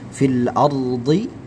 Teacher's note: rnya ditebalkan ra tafkhim · Fil ardi ya, ra-nya ditebalkan, ra tafkhim disebabkan huruf sebelumnya ini adalah harakat fathah ya, harakat fathah atau dhammah, maka ra sukunnya ditebalkan ya.